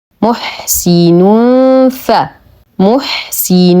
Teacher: الحاء ونعطيه صفاته نتم ضمه الميم كسره السين لدينا نهايه الكلمه تنوين وبعده حرف الفاء فالحكم اخفاء حقيقي مع غنه كامله مرققه محسن ف محسن ف محسن ف محسن محسن محسن فله فله